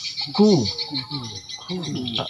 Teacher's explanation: Terasa gesekan anginnya di langit tulangnya. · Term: kaf